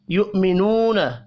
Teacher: واو مدہ کو ایک الف کے برابر کھینچ کر پڑھیں گے